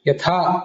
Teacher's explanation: ಯಥಾ ಅಂತಿದ್ರೆ ಅಲ್ಪಪ್ರಾಣ ಇದ್ದರೆ ಅದನ್ನ ತಿದ್ದುಕೊಬೇಕು ಯಥಾ ಅಂತ ಮಹಾಪ್ರಾಣ ಆಗಬೇಕು